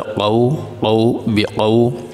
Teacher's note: قاف کے اوپر زبر ہے، اس کے بعد واو ساکن ہے، واو ساکن سے پہلے زبر آ جائے تو یہ حروف لین کہلاتا ہے اور حروف لین کو لمبا نہیں کیا جاتا، لیکن نرمی کے ساتھ پڑھا جاتا ہے، جھٹکا بھی نہیں دیا جاتا، لمبا بھی نہیں کیا جاتا